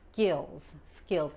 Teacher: La I es corta y la S al final se pronuncia como una Z